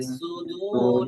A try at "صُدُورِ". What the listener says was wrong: আর সদের ক্ষেত্রে আরেকটু সু সু এটাকে আরেকটু মোটা করা দরকার, যেন একেবারে হালকা সুদু হয়ে না যায়। সু, সদ পেশ, সু, ইস্তেলা ইতবাক, এই সিফতের দিকে একটু নজর দেওয়া।